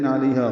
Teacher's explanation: اظہار ہے، علیہا لئی عین ہے اور ہا الف مدہ ہے، لئی کو 1.5 حرکت لمبا کرنا ہے اور ہا الف مدہ کو 2 حرکات لمبا کرنا ہے